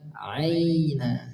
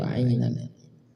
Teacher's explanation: Ain dialirkan, kemudian tekanannya sedang, tidak terlalu berlebihan, tidak juga mirip seperti hamzah karena sifatnya tawassul. Aina. Nah, gitu.